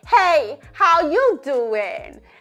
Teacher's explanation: we're gonna say it intentionally with a more higher larynx position. You can hear how it completely just changes my voice, right?